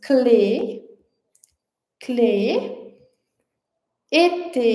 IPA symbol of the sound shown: e